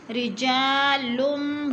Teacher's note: رجا کو بھی تھوڑا سا کھینچنا ہے، الف مد ہے